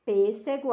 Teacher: o som mais forte é na antepenúltima